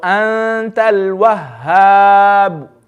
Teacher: Ikhfa. So I need to read the noon with gunna.